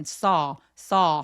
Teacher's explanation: 꿰매다는 거라서 꿰다가 아니라 봤다니까 하면서 아처럼 saw 하면서 아나 어의 애매한 사이처럼 턱을 길게 벌려 줍니다.